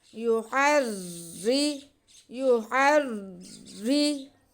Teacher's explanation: ہا کو ہم را کے ساتھ ملا لیں گے اور را کو باریک رکھیں گے کیونکہ را کے نیچے زیر ہے